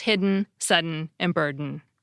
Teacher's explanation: many speakers just do away with the schwa and basically turn the N into the vowel by using the syllabic N pronunciation